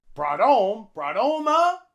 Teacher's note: In home, we drop the H and link it on with the T.